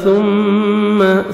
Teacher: میم مشدد غنہ کریں گے، نوز میں ساؤنڈ لے کے جائیں گے